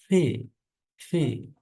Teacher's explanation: ফি উচ্চারণটা আসলে পয়ের মতো হবে না, ফয়ের মতো হবে না, হবে দুই ঠোঁটের মাঝখান থেকে, দুটার মাঝখানে, প এবং ফয়ের মাঝখান থেকে।